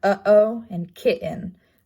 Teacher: it's a glottal placement and glottal stop um it's not voiced · It shows up as almost looking like a question mark, like a squiggle. It's a glottal placement, glottal stop. It's not voiced, and it shows up in words such as like uh-oh and kitten, where there's a pause in the sound coming out.